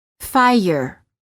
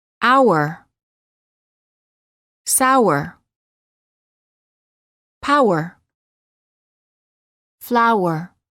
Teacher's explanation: there is a slight uh sound that is added after certain vowels making it sound almost as if the word contains an extra syllable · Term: extra uh sound